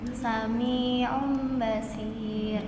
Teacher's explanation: Iya, karena memang intinya di nun sukunnya ini atau di tanwinnya itu langsung berubah menjadi huruf mim ya. Jadi langsung berubah menjadi huruf mim di huruf nun sukun dan tanwinnya.